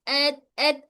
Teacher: हमारा ये जो जबान का नोक है ऊपर दांतों की जड़ को टच हो रहा है, ये मिल रहा है, तसादुम हो रहा है, मतलब दोनों मिल रहे हैं।